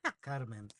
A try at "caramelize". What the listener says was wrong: No, it's not the neighbor Carmen. It's caramel, caramelize.